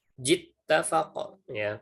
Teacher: jim dan ta ini punya sifat syiddah. Jadi tasdidnya dia syiddahnya harus kuat.